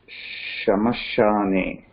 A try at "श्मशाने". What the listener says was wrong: There is no sh here, right? This is a half sh.